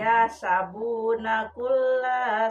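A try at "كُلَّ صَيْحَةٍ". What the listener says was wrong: Tolong dipanjangkan lah nak. Kulla. Jadi panjang.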